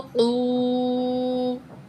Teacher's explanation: वाव ज़बरता वत, ता ज़बरता वत, ता, क़ाफ पेशवा क़ू। क़ाफ को मोटा ही पढ़ेंगे, हरूफ मुस्तालिया में से है। वाव साकिन है और उससे पहले पेश है।